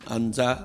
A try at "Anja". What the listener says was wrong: Non, Anza, c'est Anja. Anja.